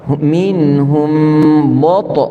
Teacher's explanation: Ba nipis, ta tebal